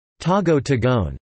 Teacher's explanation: the word tagu-taguan (hide-and-go-seek) is pronounced as tago-tagoan with a mild 'o'